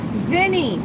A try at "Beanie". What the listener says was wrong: Beanie. No, B with B. Beanie.